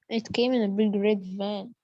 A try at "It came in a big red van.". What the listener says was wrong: لا كمان الفان. Stress on the van.